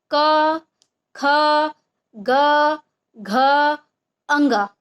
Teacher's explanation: कंठ, यानी कंठ से। ठीक है, गले से आवाज आती है। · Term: क वर्ग